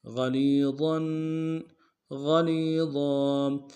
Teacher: ضا کے اوپر تنوین غنہ کریں گے. وقف صورت میں ضا کو الف سے بدل لیں گے